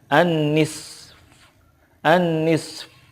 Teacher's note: annisfu anisfu nah ketika waknya itu disukunkan nya juga disukunkan tetapi suara Fa itu tidak Zahir banget gitu hanya sedikit saja